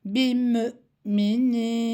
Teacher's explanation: Bu şekilde gelen kelimelerde vav harfi okunmaz. Üzerindeki hemze okunur.